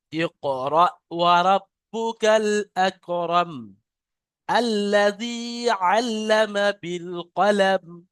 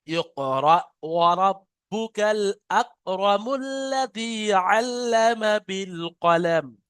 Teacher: এখানে যদি আপনি ছেড়ে দেন তাহলে মিমকে সাকিন করবে, যদি মিলিয়ে পড়েন তাহলে মিম লাম পেশ মুল, মুল্লাজি। আর যদি এখানে ধরে আলাদা ভাবে পড়েন আল্লাজি হবে।